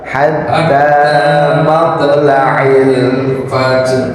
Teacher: Jadi di matla'i itu nggak ada panjangnya. Jadi dibacanya cepat.